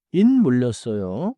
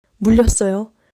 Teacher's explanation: In 물렸어요, connect the 리을 in 물 smoothly into 렸: 물-렸어요. So not a huge pause.